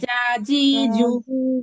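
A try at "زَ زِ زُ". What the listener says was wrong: আপু শক্ত হয়ে গেছে জিমের মতো। জা জি জু।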